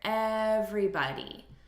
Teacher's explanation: So we're stressing the first syllable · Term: syllable stress